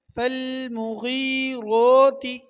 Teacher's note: غین کو موٹا پڑھنا ہے، را کو بھی موٹا پڑھنا ہے۔ را کے اوپر آپ کو جو کڑا مد نظر آ رہا ہے اس کو ایک الف کے برابر کھینچیں گے۔